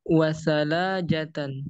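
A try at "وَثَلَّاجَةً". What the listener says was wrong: Nah, ini tasydid lamnya.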